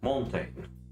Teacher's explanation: Okay, the next most common food is the crochet, a stressed syllable or beat, if you like, followed by an unstressed one, as in the word mountain.